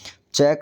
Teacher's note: च का उच्चारण स्थान है तालू